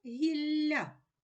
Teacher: дві букви Л позначають м'який подовжений приголосний звук ль